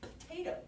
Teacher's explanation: Potato. Because if you listen to the word, potato, it's so quiet. I don't even have to say the whole vowel. Potato. I can whisper the first part. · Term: unaccented syllable